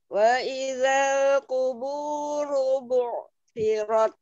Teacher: Ru-nya mau ditebalkan ru.